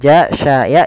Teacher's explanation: Bagaimana cara melafalkannya? Kita susukkan makhraj daripada huruf syin. Makhrajnya adalah tengah lidah kita. Ja sya ya itu tengah lidah.